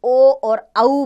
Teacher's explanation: कंठ ओष से ओ और औ बोले जाते हैं